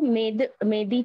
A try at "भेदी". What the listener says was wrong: मेदी नहीं है, भेदी।